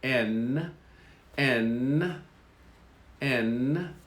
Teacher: N is the tongue touching the upper part of the mouth, the roof of the mouth, near the base of the teeth. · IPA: /n/